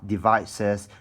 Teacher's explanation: for this 2 syllable word, you have devices. The stress is on the syllable vice